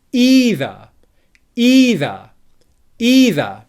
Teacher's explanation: can hear that the first syllable is stressed either either either and the second syllable is unstressed what might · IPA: /ˈiː.ðə/